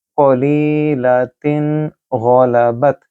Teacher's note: میں نے تن غنہ نہیں کیا کیونکہ اس کے بعد ہے غائن، اور غائن حروف اظہار میں سے ہے